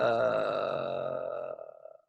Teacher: a little creak a little fry very distinct different action with the vocal folds